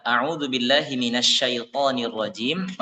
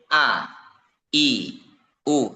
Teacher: huruf hamzah itu dibaca dengan tipis dan satu harakat. Karena kan Hamzah itu tidak panjang ya, tidak a gitu ya. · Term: tahqik